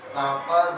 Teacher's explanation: ada bacaan qalqalah apa ini? Sugro, jadi tipis ya memantuknya.